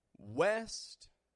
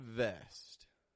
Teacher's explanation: W contracts the lips V has the bottom lip lightly touch the top teeth